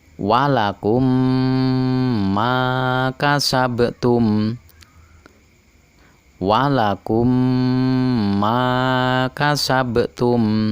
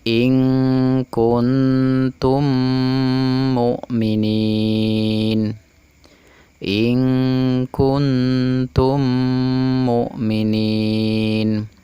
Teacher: Mim mati bertemu dengan mim dibaca dengung 2 harokat. Disebut dengan idgham mutamasilain atau idgham mimi.